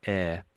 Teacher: But when it's air, we don't pronounce the H. It's a short little word here.